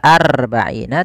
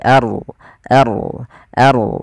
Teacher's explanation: Kemudian pelafal arbaina aya tipis rnya tebal maka di sini ada bacaan namanya ro tafkhim. Ro yang kita baca dengan bacaan tebal